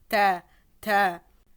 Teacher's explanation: comme si on voulait dire la lettre T. On va dire ta avec l'air qui va passer. Donc on va sentir de l'air passé.